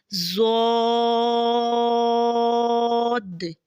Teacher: ضاد کی ادائیگی میں زبان کا پچھلا حصہ تالوں کی طرف بلند ہوتے ہوئے اور زبان کے موٹے کنارے جو سائیڈے والے جو ہیں، یہ اوپر والے جو دہاڑے ہیں ان کی جڑ پہ جو ہے نا آہستہ آہستہ نرمی سے لگے گا، اور یہ خوب موٹا اور دراز آواز میں پڑھیں گے